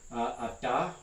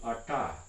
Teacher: Other common stop places that you find in other languages besides English would include retroflex consonants, and I've already showed you a couple of these, but example, retroflexion would be the difference between ata, which is non-retroflex, and arta, which is retroflex